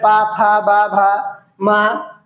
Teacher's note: जब दोनों ओठ, हमारे स्वयं के दोनों ओठ आपस में स्पर्श हो, तो वहां पर तुम्हारा ओष्ठ्य होता है